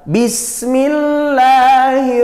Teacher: lafadz Allah dibaca tarqiq tarqiq itu tipis maksudnya tipis